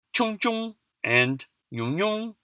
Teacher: In practice, only the first instance of the morpheme is aspirated and has a tone, with the second being unaspirated and quote-unquote toneless. These so-called toneless syllables are usually pronounced with a high tone, unless it's the last syllable, in which case the coda consonant can cause the tone to fall, even in monosyllabic words. · outside of stressed syllables, aspiration and tone kind of just get chucked out the window